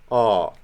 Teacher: Ptacha, it's open, back rounded.